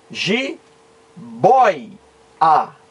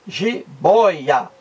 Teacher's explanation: giboia é uma palavra paroxítona porque a sílaba mais forte está na penúltima